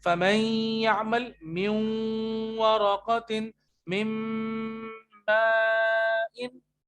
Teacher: फमई, मीम मिल रही है या से डायरेक्टली, तो नून स्किप नहीं होगा, नून आपकी नाक में गुन्ना की सूरत में जाएगा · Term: इदगाम बा गुन्ना